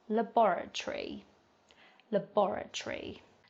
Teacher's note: towards the end of the word we have schwa sounds at the end rather than an A or an O